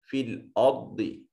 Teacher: रा साकिन माक़बल मफ्तू रा मुफ़ख्ख़म होगी। बहुत सिफ़त इस्तिला होने की वजह से मुफ़ख्ख़म अदा होगा।